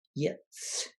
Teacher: There's a very slight creak there.